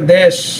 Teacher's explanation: last নিয়ম 5 number, তৎসম শব্দে এ ধ্বনি সংবৃত হয় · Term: এ ধ্বনির সংবৃত উচ্চারণ